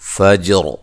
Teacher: جیم پہ قلقلہ کرنا ہے اور یہ را موٹی ہو جائے گی